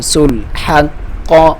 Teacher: ہا کو حلق میں سے ادا کرنا ہے اور اس کا ساؤنڈ کلیئر ہو. ہا اور قاف کو موٹا پڑھنا ہے اور اس پہ شادہ دبا کے پڑھنا ہے.